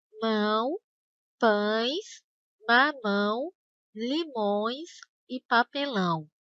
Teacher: ao dizer essas palavras, o ar precisa sair também pelo nariz. Por isso, esses ditongos são chamados de ditongos nasais.